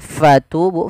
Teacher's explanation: Jangan dibaca dengan patubu, tapi fatubu dengan f. Kemudian pada lafal tu mad tabi'i, yaitu sudah adanya dhamma bertemu waw